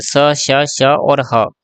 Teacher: बट अघोष तीन होते हैं। तीनों स अघोष होते हैं। बाकी ह जो है वो सघोष होता है। यानी घोष भी बोल सकते हैं हम।